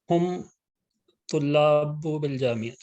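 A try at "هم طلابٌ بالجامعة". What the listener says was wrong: ہم طلاب بالجامعہ، یعنی طلاب دو تنوین پڑھیں گے. ٹھیک ہے، دو زبر دو پیش پڑھیں گے. ہم طلاب بالجامعہ.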